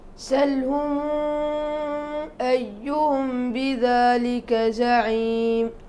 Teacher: قالون يسكنها على أرجح وجهه، وورش يصلها بست حركات، يصل الميمة ويمدها بالإشباع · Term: بصلة الميم